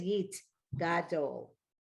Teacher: So the shava, when it finishes a syllable, was silent.